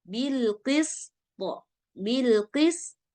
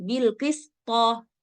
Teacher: Nah jadi dia lebih ke barisnya itu kayak fathah ya mbak-mbak kayak baris atas tapi dia enggak terang-terangan banget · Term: Qalqalah Kubro